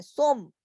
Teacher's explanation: سن ہے لیکن ہم اس کو میم پڑھ رہے ہیں